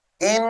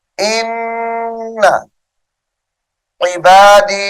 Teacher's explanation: نون مشدد کی وجہ سے غنہ ہے